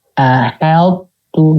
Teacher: Jadi ha-nya jadi ho gitu. Ha-nya tetap tipis, ahaltu gitu.